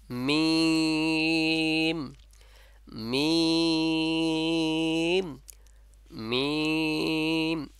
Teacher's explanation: নাকের যে বাঁশি আছে ওখান থেকে গুন্না অবস্থায় এবং ঠোঁটের যে শুকনা অংশ আছে সেখান থেকে উচ্চারণ হবে আপনার · ঠোঁটের শুকনো অংশ স্পর্শ করে উচ্চারণ করে আবার মিলিত হবে, সে আবার ফিরে আসবে সেখানে।